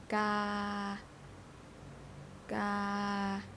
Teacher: mid-tone start and end at the same point